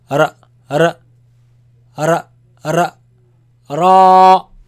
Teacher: it comes from the tip of the tongue touching the front palate roof.